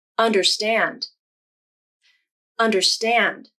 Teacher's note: In this word, the third syllable, stand, has the most stress, so it has the primary stress. Primary stress is noted in the IPA using this symbol.